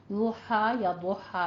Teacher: दौद अदा होता है कहाँ से, जब जुबान की करवट ऊपर दानों के साथ लगेगी